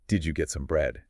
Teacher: Notice how bread rises, because I already mentioned it's old information.